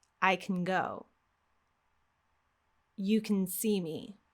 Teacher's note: we have a fast beat for the word can, and we delete the vowel.